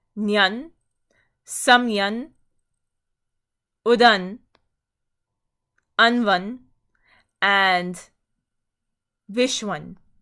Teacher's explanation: So remember the strong stem for adjectives of direction that ends in unch, but the cha is reduced to the nga. The cha is reduced, leaving the nasal consonant in place